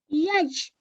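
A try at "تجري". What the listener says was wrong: Taj. This is a ta.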